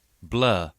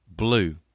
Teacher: blue contains not a static vowel like blur but just the same kind of changing quality as blow